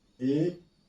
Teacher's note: तो तीसरा संवृत क्लोज, जिन स्वरों के उच्चारण में मुख द्वार लगभग बंद रहता है, यह है ई, उ। फिर है अर्ध संवृत, मतलब हाफ क्लोज, आधा बंद रहता है इसमें